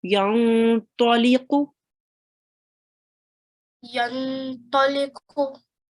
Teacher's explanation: Again, the qaf comes from your throat.